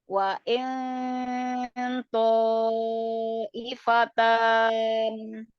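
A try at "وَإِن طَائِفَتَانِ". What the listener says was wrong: jadi bunyinya jangan waing tapi naik ya, naik, dinaikkan pangkal lidahnya. Waing ifatan. Naikkan lagi pangkal lidahnya.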